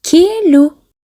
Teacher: Бұл жерде екі дауысты дыбыс бар, е мен у. Балалар, бұл жерде у дыбысы жіңішке айтылады. Себебі қасында тұрған е дауысты дыбысы да жіңішке.